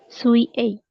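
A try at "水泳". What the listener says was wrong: Sui-ei. Betul.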